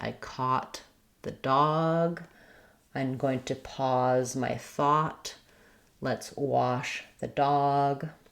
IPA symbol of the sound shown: ɑ